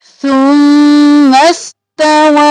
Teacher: سین ساکن سا نرمی سے، سین سیٹی کی آواز میں